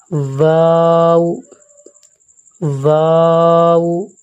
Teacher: واو، اس کو بھی تھوڑی مد کر کے ساتھ پڑھیں گے اور دونوں ہونٹوں کو گول کر کے پڑھیں گے، تب یہ واو کا مخرج ادا ہوگا، واو، واو، ہا۔